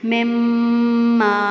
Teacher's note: ناک میں آواز ٹھہرائی جا رہی ہے اور دونوں ہونٹ بند ہے۔ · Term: غنہ